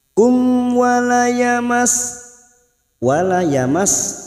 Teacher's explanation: Kita uraikan dari kata mim sukun di sini, sekarang kita wasol atau terus. Mim sukun bertemu waw, mim sukun dibaca jelas tanpa mendengung, idhar safawi.